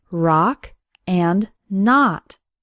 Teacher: the letter O has an AA sound as in the words rock and not